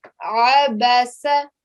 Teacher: the sound of the ain comes from the middle of the throat